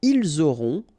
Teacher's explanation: final T not pronounced